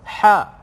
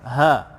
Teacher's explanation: Ha, dua-duanya huruf makhraj di bahagian kerongkong, bahagian kerongkong, tapi kedudukannya berbeza. Satu di tengah kerongkong, ha, satu di pangkal kerongkong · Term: kedudukan makhraj